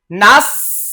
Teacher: সিনের উচ্চারণটা একটু পাতলা করে ছিটিয়ে দিতে হবে